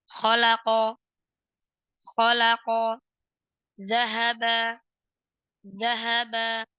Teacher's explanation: Fi'il madhi nabar terdapat di awal huruf.